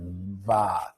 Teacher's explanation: When I make a ba sound, okay, my vocal cords, when I release my lips, my vocal cords are already vibrating. They've caught the air.